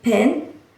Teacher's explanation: the p in pen is pronounced with the strong puff of air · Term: allophone